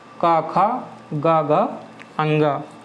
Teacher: अब अपर जा में मुंह के अंदर माउथ में आप तालु के और पीछे जाओगे तो वो हो जाएगा तालु का पीछे वाला भाग। तो इनको बोलने के लिए जीभ का पीछे वाला भाग तालु के पीछे वाले भाग को स्पर्श करता है। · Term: कंठ व्यंजन